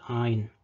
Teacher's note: you don't really hear the pharyngeal sound in Maltese, it's just like the vowel is lengthened